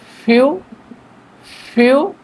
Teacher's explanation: প্রথমে উপরের দাঁত নিচের ঠোঁটের উপরে হালকা লাগিয়ে বাতাস বের করে উচ্চারণ করতে হবে